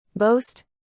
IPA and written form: boʊst (boast)